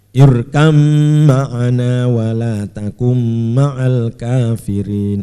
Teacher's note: Idgham mutajanisen atau idgham jinsi karena mem dan ba satu dalam makhrajnya.